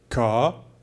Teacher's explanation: In this case, we have the sound A plus R, so it becomes a long vowel, and the R here becomes silent